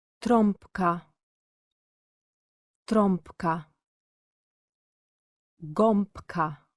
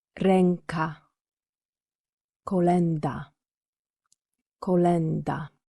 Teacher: these two vowels are rarely pronounced with their full nasal value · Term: nasal vowels